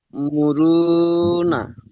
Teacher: সাকিন যুক্ত হামজাকে একটু একটু ঝাটকা দিয়ে পড়তে হবে।